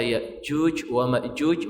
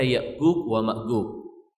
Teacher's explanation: Kalau mereka mengatakan jim, mereka akan lari kepada huruf G dalam bahasa Indonesia. Huruf G. Jim mereka akan mengatakan G.